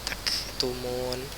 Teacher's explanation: huruf kaf kalau dia sukun ada sedikit desirannya